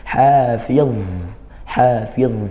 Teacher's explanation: justru dia huruf rikhwah yang ngalir suaranya, dan dia makhrajnya di ujung lidah bertemu gigi seri atas seperti huruf zal dan sa.